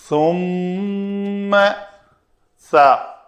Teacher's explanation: زبان دونوں دانتوں کے درمیان، اوپر والے اور نیچے والے دانتوں کے درمیان سامع کو نظر آئے یا فیل کریں تو وہ ہے سا۔